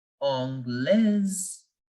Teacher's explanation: the S here is between two vowels, I and E. So we will change the sound again and we will pronounce it as Z